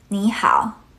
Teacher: the first one actually changes to a rising 2nd tone in natural speech.